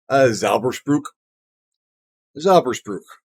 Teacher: The phlegm in the back of the throat might not be strictly necessary for the term.